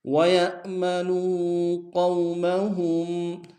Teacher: وَيَأْ میں جھٹکا دیں گے، نو میں واو مدہ ہے